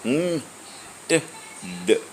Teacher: Tip of the tongue touches at the teeth ridge. They are t, d. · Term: Alveolar